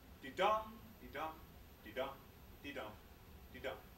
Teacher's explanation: That's five pairs of syllables in each line. The first syllable of each pair is unstressed, and the second syllable is stressed. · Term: iambic pentameter